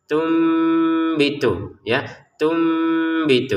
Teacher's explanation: Dibaca tum. Jadi, nun sukunnya berganti menjadi mim sukun.